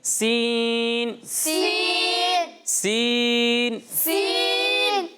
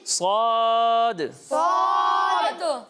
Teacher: سین کو باریک پڑھا جاتا ہے اور صاد کو پر پڑھا جاتا ہے، موٹا کر کے پڑھا جاتا ہے